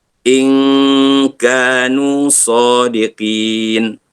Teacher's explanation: Itu dia panggil ikhfa. In nun mati berjumpa dengan kaf. Ikhfa hakiki kena baca dengung.